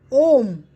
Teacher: जिन स्वरों का उच्चारण करते समय स्वरों से लगभग 3 गुना ज़्यादा समय लगता है उसे हम प्लुत स्वर कहते हैं।